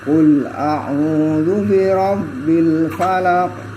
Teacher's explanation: lafaz al falaq ada huruf qaf yang asalnya berharokat fathah. Kalau di waqaf maka qafnya dibaca sukun. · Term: qalqalah kubra